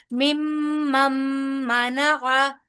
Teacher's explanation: इदगाम हो रहा है मीम का मीम के साथ तो यहां भी गुना होगा